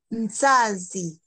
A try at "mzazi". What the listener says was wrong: Yes, mzazi.